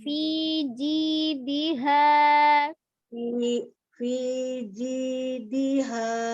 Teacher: Fi-nya panjang, kasroh berdiri sama dengan mad tabi'i.